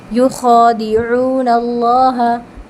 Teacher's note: आइन हलक के मिड पार्ट से निकलता है, ठीक है, वसतुल हल्क से, यानी मिड पार्ट से, हल्क के मिड पार्ट से।